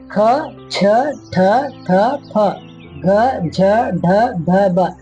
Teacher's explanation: ಹೆಚ್ಚು ಉಸಿರಿನಿಂದ ಉಚ್ಚರಿಸಲ್ಪಡುವ ಅಕ್ಷರಗಳನ್ನ ಮಹಾಪ್ರಾಣಗಳಂತೇಳಿ ಕರಿತೀವಿ. ಪ್ರತಿ ವರ್ಗದ 2 ಮತ್ತು 4ನೇ ಕಂಬ ಸಾಲುಗಳಾಗಿರ್ತವೆ.